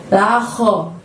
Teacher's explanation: Kho-nya ucapkan dari tenggorokan kamu bagian atas ya. La kho gitu.